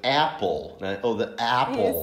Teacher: Não é exatamente o é e não é o a, é algo no meio.